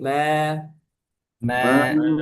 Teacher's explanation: tipiskan ma, jangan me.